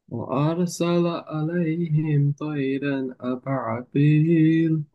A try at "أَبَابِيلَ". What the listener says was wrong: আবা, এরকম আইন ধরো না, হ্যাঁ। আবা, বা আলিফ জবর বা, টান হবে, হ্যাঁ। আবাবিল।